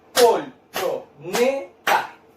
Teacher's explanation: ¿Dónde cargo la voz? En la sílaba ne. Sería penúltima.